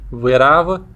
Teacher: Depois temos o B, que não era igual ao nosso B, mas era aplicativo. Isto é, os lábios eles não chegam a se fechar completamente